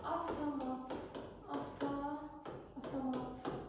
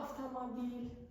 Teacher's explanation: v-t hərf birləşməsi olan sözlərdə f-t kimi tələffüz olur. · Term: f-ya keçir